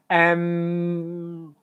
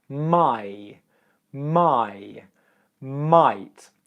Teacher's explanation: with M it's a nasal sound so the M comes out your nose